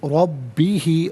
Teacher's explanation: لقاء، ربی علیحدہ، ہی علیحدہ ملا کر پڑھیں گے، ربی ہی، را پر زبر، را کو پر کر کے پڑھیں گے